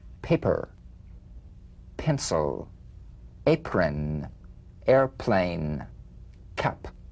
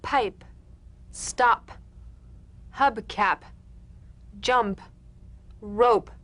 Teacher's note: The whispered tap of this drumbeat P is played with a light springing apart of the lips, just like for the B. On the springing away, feel a B in a whisper without any puff of air. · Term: unvoiced labial stop consonant